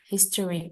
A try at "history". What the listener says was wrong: O-nya nggak jelas ya, jadi kayak lebih ke history, bukan history.